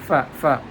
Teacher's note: The last harf of aba'uhum word is mim with sukun, and the first harf of next word is fa. Fa is also coming from the lip with a teeth.